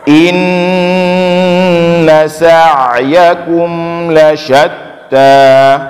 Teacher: Keluarnya huruf ain di tengah tenggorokan.